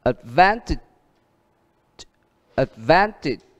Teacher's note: Đó, nhấn trước ở chữ van. Advantage. Đuôi tiếp theo đó là cũng là ian.